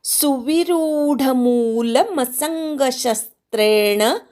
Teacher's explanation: शस्त्रेण मधल्या शवर आघात सवरच्या अनुस्वाराचा ङ झालाय ते जोडाक्षर नाही त्यामुळे सवर आघात येणार नाही